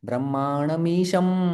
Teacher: लेकिन ब्रह्मांडमीशम, तो ईशम के बाद जो है वो ईशम शब्द है, वो यहाँ पर जो अनुस्वार है उसका उच्चारण म जैसा होता है। · तो फिर हमारा म के लिए ओठ बंद हो रहे हैं, क्योंकि ये प फ ब ब म वाला है।